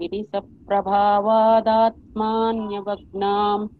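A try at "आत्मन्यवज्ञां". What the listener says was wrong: మా దీర్ఘం చేశారు.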